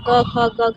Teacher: क, ख, ग, घ ये भी कंठ से उच्चारित होते हैं।